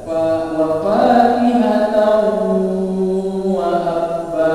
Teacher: Jadi itu namanya idgham biguna, masukkan dengan dengung, didengungkan juga. Wa fakihatan wa abba didengungkan.